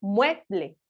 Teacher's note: implícitamente se encuentra la sílaba tónica recayendo sobre la E